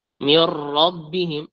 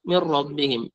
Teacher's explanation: من ربهم من غير تكرير الراءات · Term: ترك تكرير الراءات